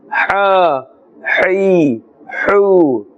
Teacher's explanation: The makhraj of this letter is from the center of the throat. A little bit more effort is needed in order to pronounce this correctly, inshallah azza wa jal.